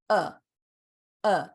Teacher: if your tongue is just flat uh uh and you just let air come across your vocal cords uh that is schwa